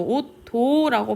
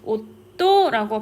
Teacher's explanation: 옷도라고 발음을 해요. 디귿 뒤에서 따라오는 디귿을 그대로 디귿으로 발음되지 못하고 쌍디귿으로 바뀌어서 발음이 되는데 이러한 현상을 된소리 되기 현상이라고 합니다